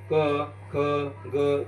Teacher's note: तो कंठावरती येऊन आदळला की कंठ स्वर निर्माण होतात